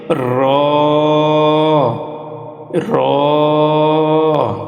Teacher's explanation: জিহবার আগার উল্টা পিঠ তার বরাবর উপরের তালুর সঙ্গে লাগাইয়া একটি হরফ উচ্চারিত হয় সেটি হচ্ছে র র 11 নম্বর মাখরাজ জিহবার আগা সামনের উপরের